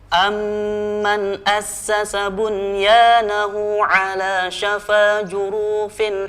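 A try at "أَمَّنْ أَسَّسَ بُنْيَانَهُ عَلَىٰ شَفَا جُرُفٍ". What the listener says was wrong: Ya, bisa diulang, awas. Panjang pendeknya, jurufin pendek. Pelan-pelan dan tarik nafas juga.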